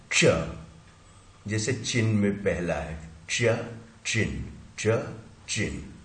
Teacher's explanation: ये ट जो होता था हमारा होता है अल्वियोलर साउंड कहलाती है, ये टीथ रिज से चिपकती है और इसी में हम श को जोड़ देते हैं तो ये क्या पोस्ट अल्वियोलर हो जाता है, मतलब थोड़ा सा और ऊपर आ जाता है।